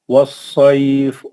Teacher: यह सौद मुस्तालिया है, इसको मोटे आवाज के साथ पढ़ेंगे।